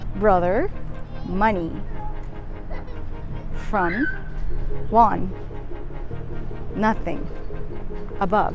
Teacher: should be very relaxed in the middle of the mouth and the mouth is less open than for regular short o